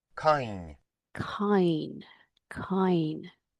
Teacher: you're getting almost a y sound added to the final N there.